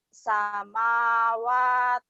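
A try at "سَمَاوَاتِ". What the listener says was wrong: Wa-nya panjangin.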